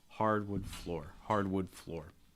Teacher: wood is going to get a little bit reduced so you don't need to emphasize that it should not receive stress · Hardwood floor. So you're going to stress hard, and you're also going to stress floor, but wood is going to get a little bit reduced. So you don't need to emphasize that. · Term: three-word group